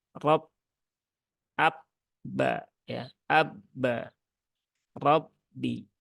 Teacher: itu dia punya sifat syidah ya punya sifat syidah salah satunya syidah itu kuat ya tertahan suara nya